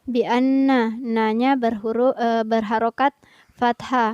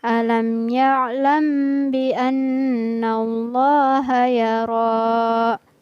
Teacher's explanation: huruf lafaz Allahu kedengaran tebal karena diawali dengan huruf yang berharokat fathah. Bi anna, nanya berharokat fathah, maka lafaz Allahnya dijadikan tebal cara penyebutannya.